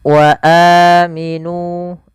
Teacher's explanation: Panjangnya adalah dua harakat sebagaimana mad thabi'i. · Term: mad badal